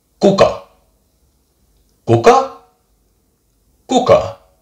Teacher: just right away explosive a short sound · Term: consonant k